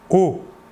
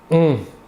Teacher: L'air sortira entièrement par la bouche. Alors que pour le ON, l'air sortira par le nez.